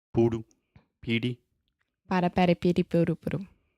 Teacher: your tongue is just touching the top of your mouth really, really fast, and it's just a quick little tap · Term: flap T